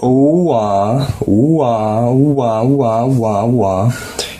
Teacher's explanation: combining two vowels doesn't seem like it should give you a W but it does and really in Korean you're just saying them both really really quickly